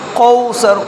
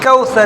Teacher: اکثر لوگ اس کاف کو موٹا پڑھتے ہیں، قوسر، قوسر نہیں ہے، یہ کوثر ہے، کاف باریک والا